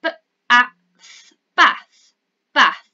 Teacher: Yep, well done. It's the short th sound where you stick your tongue out.